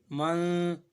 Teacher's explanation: دو زبر من جب یہاں پڑھتے ہیں تو اخفا ہوتا ہے، ناک میں جو ہے نا آواز چھپ جاتی ہے